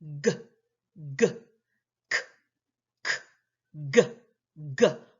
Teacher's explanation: our place of articulation is the soft palate and the back of the tongue